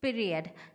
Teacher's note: in the second syllable of the word period the first element of the diphthong may be the weaker of the two elements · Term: rising diphthongs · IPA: /pi əri əd/